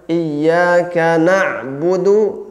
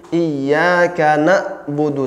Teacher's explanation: kalau misalnya ditahan suaranya maka jadi iyyaka na'budu, seolah-olah hamzah yang sukun padahal ain yang sukun di situ